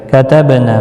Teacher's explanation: الف کی مقدار کے برابر کھینچ کر بھی پڑھیں گے کتبنا با ساکن پر قلقلہ ہوگا نا الف مدہ ہے ایک الف کی مقدار کے برابر کھینچ